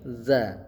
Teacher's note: zal ini juga di ujung lidah za. Dza. Jadi za lidahnya tuh seperti digigit dza